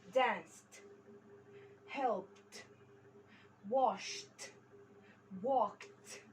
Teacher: كل نهايات الحروف هنا unvoiced. يعني unvoiced يعني ما فيهاش vibration.